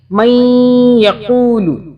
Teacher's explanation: یہاں پہ میں آپ کو بتا دیتی ہوں کہ نون کے اوپر تشدید ہے اور یہاں پہ ہم نون کو تھوڑا سا ناک میں رکھ کے 2 سیکنڈ کے لیے پڑھیں گے